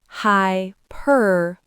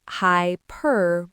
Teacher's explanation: The first syllable is high, just like the word high. The second syllable is where the stress is, per. This is the strong, loud part of the word. The third syllable is a simple bow sound, and the final syllable, li, is where people get tripped up by the spelling.